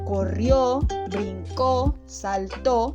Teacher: que todas aquellas que están en pasado como corrió brinco salto todas se acentúan en la última sílaba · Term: palabras agudas